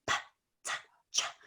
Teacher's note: You can whisper them because you don't need your vocal cords to say them. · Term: voiceless consonants